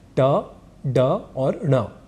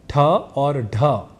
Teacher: यहां अल्पप्राण है ट ड और ण ये तीन अक्षर और यही ठ और ढ ये दो अक्षर महाप्राण इस नाम से जाने जाते हैं